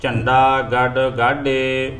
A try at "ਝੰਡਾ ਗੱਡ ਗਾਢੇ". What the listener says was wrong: ਢੱਡੇ ਦਾ ਢੱਡੇ ਦਾ ਖਿਆਲ ਰੱਖਿਆ। ਗਾਡਾ ਪਹਿਲਾਂ ਡੱਡਾ ਹੈ, ਫਿਰ ਅੱਗੇ ਹੈ ਗਾਢੇ, ਢੱਡਾ ਲੱਗਾ, ਝੰਡਾ ਗੱਡ ਗਾਢੇ। ਇਸ ਪ੍ਰਕਾਰ ਡੱਡੇ ਦਾ ਤੇ ਢੱਡੇ ਦਾ ਖਿਆਲ ਰੱਖਿਆ ਜਾਵੇ ਉਚਾਰਨ ਦਾ।